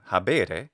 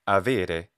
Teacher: between vowels, the letter B became a V sound, so habere was now avere, along with other changes.